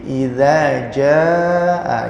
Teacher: ini mad wajib muttasil ya, bacaannya 6 harokat atau 4 harokat ya. Jadi nggak boleh kurang dari 4 harokat ya.